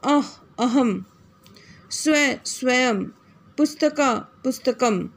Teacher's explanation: अब शब्द के अंत में अनुस्वार, शब्द के जब अनुस्वार शब्द के अंत में आता है तो इसका उच्चारण हमेशा म के रूप में ही होता है।